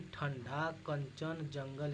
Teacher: अनुस्वार के उच्चारण में वायु नाक से निकलती है और उच्चारण झटके के साथ होता है